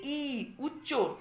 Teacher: তারপরে দেখো জিভের অবস্থান হচ্ছে কি ই, উচ্চর দিকে আসছে, মানে সামনের দিকে ওপরে উঠে যাচ্ছে। আর মুখবিবরের সংকোচন প্রসারণ অনুযায়ী ই মুখবিবরটা কিন্তু এখানে সংকুচিতই থাকছে।